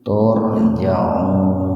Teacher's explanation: Tur tabhim, huruf ro didahului oleh doma, jadi ro-nya dibaca tebal